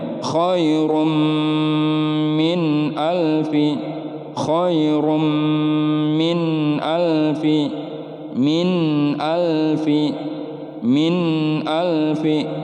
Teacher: Namanya izhar, nun mati bertemu alif. Nunnya dibaca jelas, tidak boleh ada pantulan dan juga tidak boleh ditahan terlalu lama.